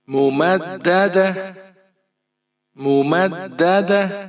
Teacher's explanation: تا دو زیر تین ممددۃ، وقف کریں گے یہاں پر ممددہ، وقف کی صورت میں ہم نے اینڈ پر جو ہے ہا کی آواز باہر نکالنی ہے